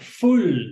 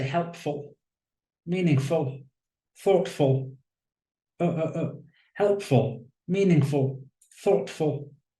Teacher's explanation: like another word it sounds like fool doesn't it fool but as a suffix it's an unstressed syllable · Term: schwa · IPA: /ə/